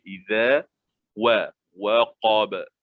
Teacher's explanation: Zal, jangan jadikan zai. Dia zal. Keluarkan lidah sedikit, lembut je.